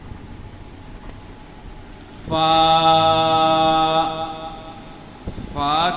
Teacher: فا، فا کا مخرج ہونٹوں کا تر حصہ، یعنی جب ہم دونوں ہونٹوں کے تر حصے کو ملاتے ہیں تو فا ادا ہوتا ہے۔